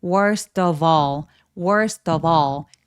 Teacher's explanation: worst of 하면서 두 번째 단어가 또 모음이니까 연음 처리해 주시는게 좋아요. 그래서 계속 지금 연음이 되는데 그래서 전체 소리는 worst of all. · st가 모음과 만나서 약간 된소리가 나면서 연결되고요. of의 발음 끼워 보시면 얘는 v거든요.